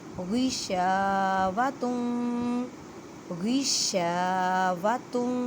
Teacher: میم ساکن کے بعد غین ہے، اظہار شفوی کا قاعدہ کریں غشاوۃ غشاوۃ، شین کو 1 الف کی مقدار میں کھینچ کر پڑھیں کیونکہ الف سے پہلے زبر ہے، الف مدہ کا قاعدہ ہو رہا ہے غشاوۃ۔